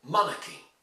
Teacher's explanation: In monarchy you need to stress on the first syllable, monarchy. And once you do that, well then, you hardly hear the R.